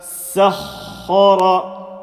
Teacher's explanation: Sin empty mouth, ha full mouth, ra full mouth. Say the shadda sound in the ha. Hold it together.